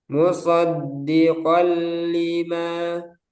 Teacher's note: Nah, jadi ini huruf pertama, ini huruf kedua, langsung masuk ke huruf kedua tanpa disertai gunnah · Jika ada nun sukun atau tanwin bertemu lam dan ro. Cara membacanya diidghamkan atau dimasukkan ke dalam huruf berikutnya tanpa gunnah. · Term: idgham bila gunnah